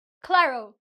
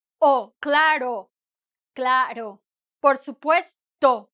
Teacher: Adding a W sound or a kind of a U sound that is not needed. When we say, when we have a word, una palabra that ends with O, it ends with O.